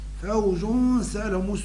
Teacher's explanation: هذا فوج، فوج جو جو الأولى، الحركة الأولى الضمة الأولى حكمها الإظهار، فوجو، والثانية فيها نون الإدغام، فيها نون التنوين، فوجو أن فوجو، هذا لفظها فوجو سالهم. والغنة مرقة لأن السين حروف الترقيق